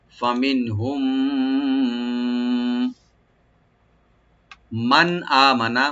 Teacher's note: ফা ওপেন রাখবেন আর নুন সাকিন এখানে আমরা জাহার করব ফামিনহুম মিম সাকিন পর যেহেতু মিম আসছে এখানে আমরা ইদগাম স্বাভাবিক করব